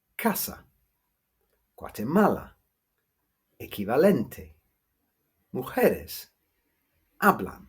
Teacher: the stress always falls on the second to last penultimate syllable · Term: penultimate stress